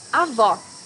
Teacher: you need to hear the sound of the last o in the syllable it should be an open o